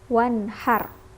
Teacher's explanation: harus dibaca jelas, tidak dengung, tidak masuk, tapi langsung dibaca jelas